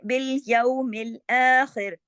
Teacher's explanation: ख़ा जो है वो मोटा पड़ जाएगा, लेकिन रा जो है वो बारीक होगा